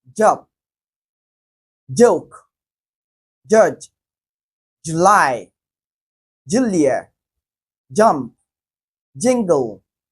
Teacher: the first sound there is produced with a vibration in the vocal cord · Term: voiced alvula africate